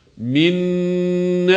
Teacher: cezimli nun kendisinden sonra gelen harekeli nun harfine idğam edilerek okunacaktır bu kelimelerin okunuşu da minin şeklinde hem idğam ile hem de gunne ile okunmalıdır